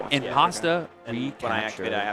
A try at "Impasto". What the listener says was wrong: Impasto, not Impasta. Now it sounds like you're hungry.